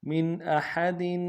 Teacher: میم کو نون ساکن کے ساتھ ملانا ہے، نون ساکن میں یہاں پہ اظہار ہوگا. احد میں ہا کو گہرائی سے ادا کریں گے، دال کے نیچے تنوین ہے، یہاں پہ بھی اظہار کریں گے. · حتی میں ہا کو تا کے ساتھ ملانا ہے، تا کے اوپر تشدید زور دیں گے، اگر تا کے اوپر کھڑا زبر ہے ایک انداز میں کھینچیں گے.